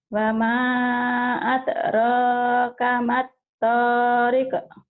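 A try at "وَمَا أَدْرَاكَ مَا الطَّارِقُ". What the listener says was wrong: wa ma adraka mattariq. Tariq. Qa. Tuh bukan ek, bukan k, tapi ke ko. Tariq. kol-kolah ya Bu ya. Gak apa-apa hutang kol-kol nanti Bu latih ya.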